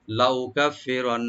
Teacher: নুন মুসাদ্দাদ যেটা লাস্টে আছে এখানে ওয়াজিব গুন্না, এখানে আমরা একালে পরিমাণ তাকরিবান আমরা গুন্না করব।